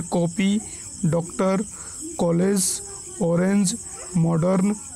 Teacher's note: हम बिल्कुल आ नहीं बोलते बल्कि हल्का ओ करके बोलते हैं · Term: आगत स्वर